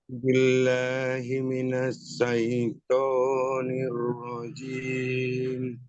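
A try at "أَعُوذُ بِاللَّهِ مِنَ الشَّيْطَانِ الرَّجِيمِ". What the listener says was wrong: Jelaskan shin ya. Minas. Shin. Minas. Ash. A'udzu billahi minasy.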